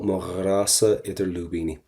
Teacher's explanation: we're going to get that kind of a r sound in the back of the throat